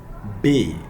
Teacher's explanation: it produced with the two lips coming together